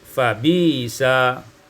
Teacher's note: ibdal hamzati ya'an, dengan menukar hamzah dengan huruf ya